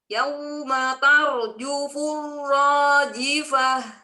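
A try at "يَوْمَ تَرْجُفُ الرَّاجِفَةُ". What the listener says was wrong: Coba lagi, lembutkan lagi. Yauma, ya-nya sempurnakan fathahnya. Yauma tarjufur rajifah.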